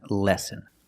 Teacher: these two words are pronounced exactly the same lesson and lesson with the short sound e like bed and ten